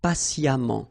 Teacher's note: So as I told you, even if you write it EMMENT, phonetically it goes like amant